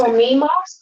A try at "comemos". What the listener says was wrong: Close. Comimos is with an I. You said comimos. Comemos. Comemos.